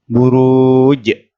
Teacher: dan nya panjang satu ayunan buruj roknya dibaca panjang dua ayunan dan di akhir ayat dibaca qalqalah artinya dipantulkan